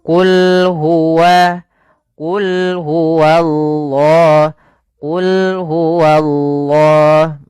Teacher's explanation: Misalnya qul huwallah wnya tebal. Harusnya bedakan wa tipis dulu baru allahnya tebal.